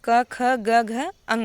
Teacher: अ और क वर्ग का और ह का उच्चारण स्थान कंठ होता है।